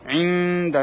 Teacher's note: নুন সাকিনের পরে দাল এসেছে, সেজন্য নুনটাকে গুণনা করতে হবে।